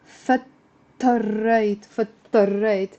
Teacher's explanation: You see the da is almost like it's not there even if it's written.